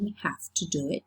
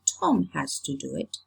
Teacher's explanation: it's the voiced fricative which becomes devoiced, which loses voice, because the vocal cords don't vibrate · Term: established fricative devoicing